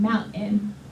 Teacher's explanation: the vocal folds sort of close, and you get that eh sound, mountain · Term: glottal stop